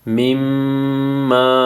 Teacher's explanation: میم مشدد ہے، یہاں پہ غنہ ہوگا